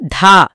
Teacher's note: దా కాదు, ధా. గాలి వస్తూ పలకాలి.